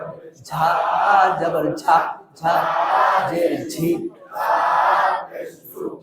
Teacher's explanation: সামনের নিচের দাঁতের আগা থেকে শীষ সহ পাতলা ভাবে আদায়। ঝা জবর ঝা, ঝা জের ঝি, সামনের নিচের দাঁতের আগা থেকে শীষ সহ পাতলা ভাবে আদায়। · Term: সফিরা